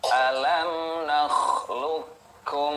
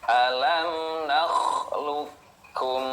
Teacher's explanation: cara membacanya Q sukun tidak dipantulkan Nah karena apa Karena bertemu huruf Kaf